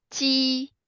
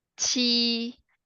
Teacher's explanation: When you pronounce it ji, you're holding the air. But when you pronounce qi, it's actually air came out. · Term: airflow